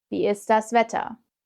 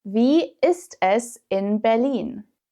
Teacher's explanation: in fast-spoken German, it's pronounced like the English is, so without the T.